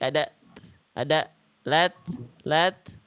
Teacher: Nah, ada percikan nafasnya dulu, Bunda. Jangan sampai enggak ada. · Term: hams